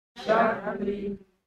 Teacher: ringankan takrir ketika ro itu bertasydid